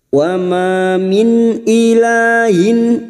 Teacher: diikuti Alif dua harakat Min nun sukun bertemu Hamzah idhar halqi nun sukun dibaca jelas tanpa mendengung